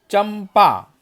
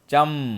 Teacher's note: पंचम अक्षर म का उच्चारण अनुस्वार में होता है, चम, है ना।